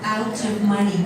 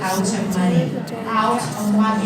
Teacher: it ends in T, and then there's a vowel. We need to hear that T a little bit more. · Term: link it